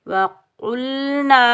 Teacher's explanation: نون کے اوپر زبر، آگے الف خالی ہے، یہ الف مدہ ہے، اس کو ہم ایک الف کی مقدار کھینچ کر ادا کریں گے۔